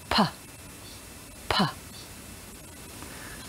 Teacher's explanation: you make this sound by putting your lips together and then blowing them open with some air. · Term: the sound P